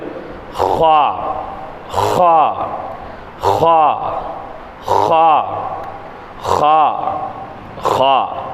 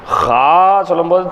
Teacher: ஹா ஹா சொல்லும்போது தொண்டையினுடைய நடுப்பகுதியிலேருந்து எடுக்க மாட்டோம். லேசாக ஹா அப்படிதான் அப்படியே அடிச்சுவோம், துப்புவோம் இல்லையா. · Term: ஹாவினுடைய உச்சரிப்பு